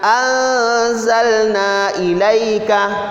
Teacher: nun mati ketemu dengan zai, seolah-olah kita mau menyebutkan huruf zai itu